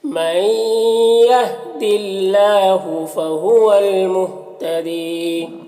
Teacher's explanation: فہو المہتدی، یہاں پر یا مدہ ہے، ایک الف کے برابر کھینچیں گے اس طرح سے، من یہد اللہ فہو المہتدی۔